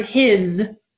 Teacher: the word his is spoken with a Z at the end, even though it's spelled with an S